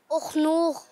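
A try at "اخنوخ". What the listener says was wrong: नहीं, थोड़ा सा दुरुस्त करें। उखनूख नहीं, हमजा के ऊपर जबर लगा दें।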